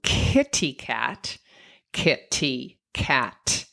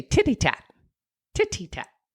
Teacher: So that's a k and a t, right? Back and forth in the mouth.